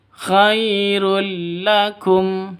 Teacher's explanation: Tanwin bertemu dengan lam. Cara bacanya masuk ke lam tanpa dengung. Karena idgham bila gunnah.